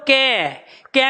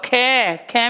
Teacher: कै में वायु लग रही है कम, अब खे में लग रही है ज्यादा